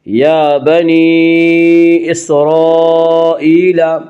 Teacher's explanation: یا بنی، یا کے اوپر کھڑا زبر ہے، کھڑا زبر کو ایک الف کے برابر کھینچ کر پڑھیں گے